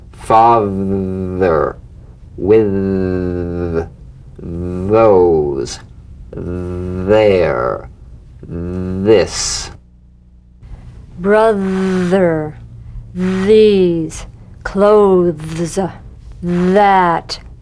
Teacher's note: the voiced tongue point to teeth fricative th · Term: voiced th